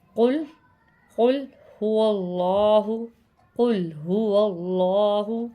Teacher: یہاں پہ اللہ کے نام کو ہم موٹا پڑھ رہے ہیں کیونکہ یہاں پر اللہ کے نام سے پہلے زبر ہے